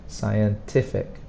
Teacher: the strong sound is on the ti